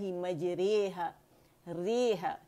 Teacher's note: رے یہ جو ہے نا یہ ہم باریک پڑھتے ہیں, ورنہ را کے ساتھ موٹی ہوتی ہے, مد آتی ہے. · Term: امالہ کبرا